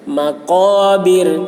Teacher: قاف کو موٹی آواز میں اور را باریک ہوگی یہاں پر کیونکہ وقف کرنے کے وقت را ساکن ہو جا رہا، اور رائے ساکن سے پہلے زیر ہے، تو رائے ساکن سے پہلے جب زیر ہو تو را باریک ہوتی ہے.